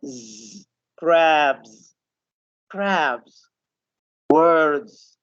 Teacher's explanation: But if you can see this list of sounds, the beh sound, deh sound, geh, and l, ing, r, v, these sounds comes from inside. They make vibration in the vocal cords.